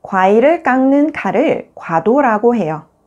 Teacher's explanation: When the 받침쌍 기역 is followed by the consonant 는 or 님, 쌍 기역 is pronounced as 응